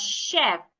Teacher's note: The ch should be sounded like sh.